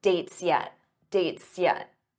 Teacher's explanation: notice how that s Blends into the Y for yet dates yet and it sounds like one word dates yet dates